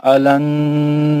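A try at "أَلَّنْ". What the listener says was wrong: अलन नहीं है, अल्लन। तजदीद को 2 बार पढ़ना है ना यार, अलन है वो, अल्लन है ना,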